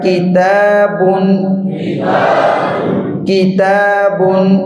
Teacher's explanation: زبان کی جڑ اور تالو کا سخت حصہ وہ کیا ہے؟ کاف کا مخرج ہے۔